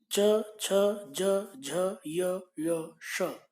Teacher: तालव्य तालु च छ ज झ य श, आपकी जीभ ऊपर की तरफ प्लेन होकर तालु से टच करती है, छू जाती है।